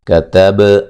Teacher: با کو ہلا کے پڑھیں گے، با قلقلہ ہے